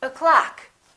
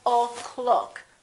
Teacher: the first syllable is reduced the second syllable is stressed so this one disappears and becomes this uh sound up so